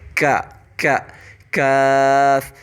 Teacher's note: کاف کا جو آرٹیکولیشن پوائنٹ ہے وہ قوف کے آرٹیکولیشن پوائنٹ سے تھوڑا سا آؤٹ سائڈ پہ ہے، مینز کہ ہمارے وہی ڈیپسٹ پارٹ آف دا ٹنگ ہوگا، لیکن اس سے تھوڑا آؤٹر والا حصہ ہمارے ہارڈ پیلیٹ اور سافٹ پیلیٹ کے دونوں، سافٹ پیلیٹ کے اینڈ والے پارٹ اور ہارڈ پیلیٹ کے سٹارٹنگ والے پوائنٹ پہ ٹچ ہوگا